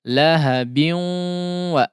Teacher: ada tanwin ya yang bertemu dengan huruf waw, maka diidghamkan di situ dengan idgham atau jangan disertai gunnah ya.